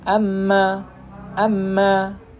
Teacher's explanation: bertemunya antara kedua bibir dalam keadaan tertutup disertai dengan dengung yang keluar dari kisyum pangkal hidung yaitu huruf mim · mim ini adalah tambahan khayshum. Ketika kita mengucapkan huruf mim, dia ada tambahan dari hidung sini.